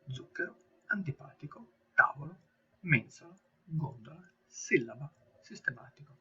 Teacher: Le parole sdrucciole dove l'accento tonico cade sulla terzultima sillaba